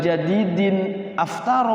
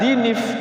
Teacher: Tanwinnya hilang, timbul nun kecil.